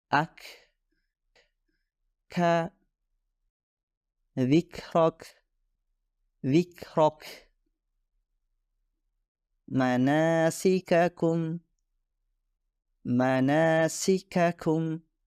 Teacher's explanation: ketika huruf Kaf dihasilkan ada sedikit semburan udara atau nafas yang keluar setelahnya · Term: hamas